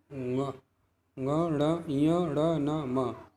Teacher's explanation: अर्थात प्रत्येक वर्ग के, पांचों वर्ग के अंतिम वर्ण, पांचवें वर्ण इनका नासिका स्थान होता है।